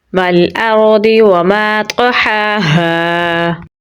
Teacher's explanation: हमज़ा को रा के साथ मिलाएंगे। रा को पुर यानी मोटा पढ़ेंगे क्योंकि इसके पिछले हर्फ पर ज़बर है। दौद पुर यानी मोटा पढ़ेंगे। · वाव को लैम के साथ मिलाएंगे क्योंकि लैम के ऊपर जज़म है। हमज़ा को रा के साथ मिलाएंगे।